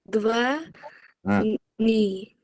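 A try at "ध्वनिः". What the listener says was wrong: Very good. But there is a visargam. You left the visargam.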